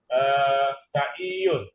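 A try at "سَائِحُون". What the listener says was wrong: Saihun. Yang panjang sa-nya ya.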